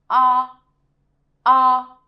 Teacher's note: It's very round and the pitch is also quite high. Actually, some people say that it sounds similar to a sound.